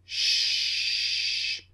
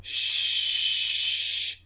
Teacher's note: the tip of the tongue comes up slightly and you push air out of the mouth but with the second sound shhhh it's unvoiced